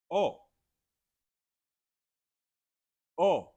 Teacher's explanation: instead of saying O long, like drawn out, in Spanish it's very short and quick